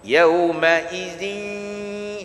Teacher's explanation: Masuk idgham, masuk huruf ma'al ghunnah bersama-sama dengung.